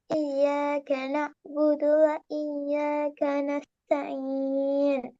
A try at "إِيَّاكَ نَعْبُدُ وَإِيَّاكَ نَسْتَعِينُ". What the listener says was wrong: போதாது. நஸ்தாயின் சரியா 1 செகண்ட் நீட்டுறீங்க. சரிதானே? அதுக்கு பழகணும்.